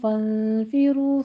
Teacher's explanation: فنفرو میں بھی نون ساکن کا قاعدہ اخفا حقیقی ہے، 2 کاؤنٹ کرنا ہے